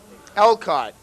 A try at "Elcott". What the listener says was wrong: No, that's not a T at the end.